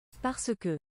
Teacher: that's very southern French there. To pronounce the E at the end of parce. Like, Parisians take the piss out of southerners for saying it that way.